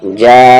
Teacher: ये जो जा स्टार्ट हुआ है इसी वर्ड का हिस्सा ये हमज़ा है, तो ये मद मुत्तसिल हुआ और इसको हम 5 काउंट्स खींचेंगे, यानी 5 हरकत के इक्वल खींचेंगे।